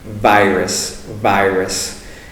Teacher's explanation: So it's important to make that proper V sound for virus. Notice my upper teeth and lower lip are touching.